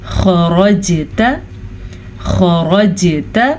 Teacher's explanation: خَرَجْتَ خا کو پر پڑھیں گے